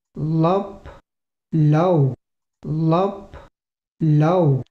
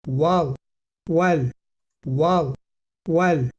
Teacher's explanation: we have a secondary articulation contrast in terms of palatalization and velarization, and they are produced in the denti-alveolar region.